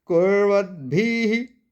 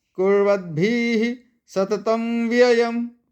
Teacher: कुर्वद भी नहीं बोला मैंने, र भी जल्दी बोला और द भी जल्दी बोला।